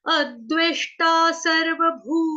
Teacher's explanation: ना के साथ भी ना, और आधा जो न के ऊपर अनुस्वार है, जो बिंदी लगी है ऊपर, उसका उच्चारण होगा आधे म से, हलंत म से